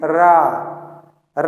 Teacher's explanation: तो इस चीज को ध्यान में रखिएगा कि लुंठित या प्रकंपित मतलब होता है कि जीभ तालु से लुढ़क कर स्पर्श करेगी, धीरे से, ठीक, रा जब बोलेंगे तो वो लुढ़क कर स्पर्श करती है, झटके से नहीं जाती है, रा लुढ़क कर स्पर्श करेगी।